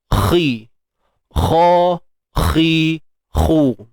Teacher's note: untuk huruf kha ni bersifat isti'la selama-lamanya